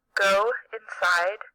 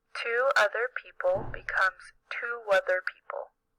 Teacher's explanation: linking words with the wha sound happens even if there isn't a w letter in the spelling